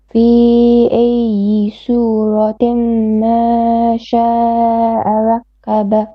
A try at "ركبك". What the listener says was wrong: Make your ra more heavy. رك, kaf, not qa. ركبك.